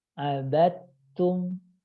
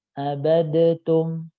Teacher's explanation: Kemudian tadi contoh kedua adalah huruf yang makhrajnya sama, dal dengan ta, itu sama juga demikian. Ya, dalnya sukun, ta-nya berharokat, maka dalnya harus hilang